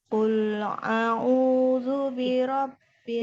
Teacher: Di mana makhrajnya huruf lam di gusi ya, gusi gigi atas. Jadi biarkan nempel di situ terus dulu lidahnya, ya.